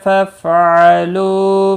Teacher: واو مدہ ہے، ایک الف کے برابر کھینچ کر پڑھیں گے، فا ساکن کو ہلانا نہیں، حمزہ ساکن تھوڑا جھٹکے کے ساتھ ادا کیا جائے گا۔